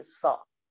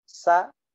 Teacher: So memiliki sifat tebal. Suaranya ngangkat, naik. Ya, sa turun. Sa. Gak boleh so.